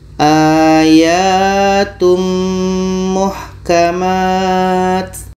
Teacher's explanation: Karena sempurna masuknya tanwin kepada mim. Tanwin ini kita masukkan kepada mim, sempurna. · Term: idgham kamil